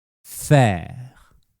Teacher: For the sound /ɛ/ your tongue is at the front, and low, but not touching the bottom of your mouth.